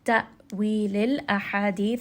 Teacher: ha is going to be from the middle of the throat, so make sure that you are reading this with a little bit of warm air coming out as you recite.